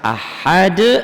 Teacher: Indalnya qalqalah kubro, karena huruf qalqalahnya hidup dimatikan.